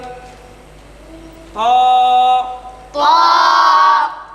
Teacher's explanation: জিহ্বার আগা উপরে দুই দাঁতের গোড়ার সাথে লাগাইয়া ত।